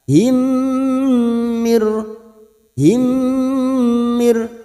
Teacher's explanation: masuk pada huruf mim berikutnya dan mendengung selama tiga harakat